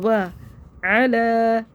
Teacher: محمدیوں، واو کو دوبارہ پڑھیں گے. و علی، عین کو حلق سے نکال کے پڑھیں گے